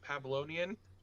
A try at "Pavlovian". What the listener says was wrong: Just the N with a V, Pavlovian.